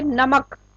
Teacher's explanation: नमक हम बोलते हैं तो इसमें म पर बल दिया जा रहा है, ना तो न और ना ही क, यानी कि म के ऊपर। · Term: बलाघात